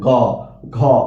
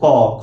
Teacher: আপনি যখন উচ্চারণ করবেন গ ঘ দেখবেন স্বরতন্ত্র বেশি কাপতেছে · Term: ঘোষ